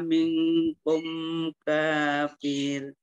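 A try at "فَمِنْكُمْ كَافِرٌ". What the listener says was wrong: sebetulnya. Boleh berhenti, tapi firnya jangan dipanjangkan. Kafir. Kafir.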